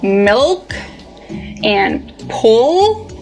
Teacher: In contrast to the light L, when you produce the dark L, the back of your tongue bunches.